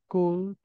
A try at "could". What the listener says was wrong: بنلاحظ انه عندي ال قبل الحرف الاخير. This L is silent.